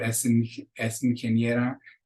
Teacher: And then a consonant, the end of the word, es ingeniera. Sounds like you're saying all one word, es ingeniera.